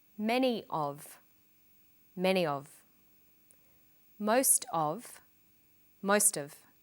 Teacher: Notice that of in these phrases is unstressed.